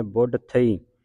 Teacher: ਬਬੇ ਦੇ ਅਧਕ ਲੱਗੇਗਾ ਕਸ ਕੇ ਬੋਲਣਾ